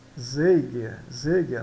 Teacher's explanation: O Z aqui, então, ele tem o som de TS